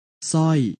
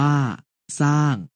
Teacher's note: ออกเสียงพยัญชนะตัวหน้าเพียงตัวเดียว